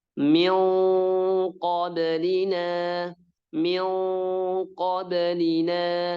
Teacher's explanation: makhraj qaf itu lidah bagian belakang nempel langit-langit atas yang lunak. Nah, jadi nempel karena dia langsung ke makhrajnya.